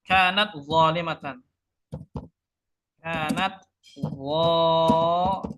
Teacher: tak makhrajnya ujung lidah di pangkal gigi seri atas, zo ujung lidah di antara 2 gigi ya. Ujung lidah di antara 2 gigi. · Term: taqarub